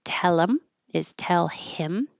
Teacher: this is about deleting the H and the th and connecting the previous sound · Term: H deletion